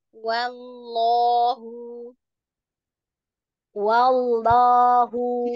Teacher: Lamnya kurang tebal aja ya. Wanya udah tipis, lamnya jangan ikut tipis. Wa, Wa lamnya tebal.